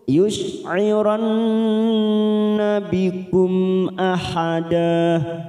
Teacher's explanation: yush'iran masuk kata huruf nun yang bertasdid, gunnah musaddadah, yush'iran kita tekan 3 ketuk